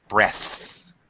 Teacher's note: the noun is breath, voiceless, th, breath. Breath.